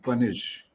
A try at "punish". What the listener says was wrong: So the sound at the end is sha, punish. It is not sa.